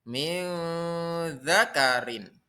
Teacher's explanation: Min dzakarin disebut dengan ikhfa. Ikhfa hakiki. Artinya menyamarkan dengan membaca dengung.